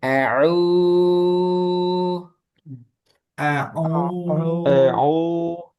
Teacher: di sini juga perlu diperhatikan ain dia tidak masuk hidung